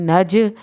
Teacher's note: जीम हरूफ कलकला साकिन हालत में आ गया तो आपने इसको हिला के पढ़ना है